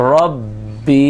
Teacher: ربی ہی ربی ہی، جمع والا قلقلہ کرتے ہوئے اس کو پڑھیں گے۔ ربی کھینچنا نہیں ہے، صرف جمع والا قلقلہ کرنا ہے، را کو موٹا پڑھنا ہے